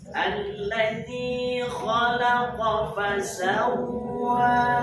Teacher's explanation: Fasawwa jangan ada gunnah di huruf waw, tidak boleh fasawwa. Karena di situ tasdidnya adalah tasdid lazimah atau asliyah, tasdid asli.